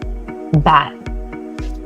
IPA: b